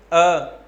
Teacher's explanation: ध्वनि देखेंगे आप कहाँ से निकल रही, कंठ से ध्वनि निकलेगी। उच्चारण करने का तरीका है, दोनों दांतों के बीच में हल्का सा गैप होना चाहिए, जीभ वहीं आसपास होनी चाहिए, और आवाज़ आपकी साउंड कहाँ से आनी चाहिए?